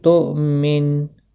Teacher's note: حمزہ ساکن کو تھوڑا جھٹکے کے ساتھ ادا کریں